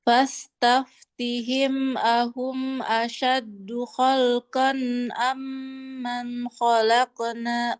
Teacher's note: tanwin qaf nih ketemu hamzah dia jadinya jelas. Suara tanwinnya harus jelas, jangan kayak Khalqan ikhfa, kayak jadi samar-samar. Dan nggak ada gunnahnya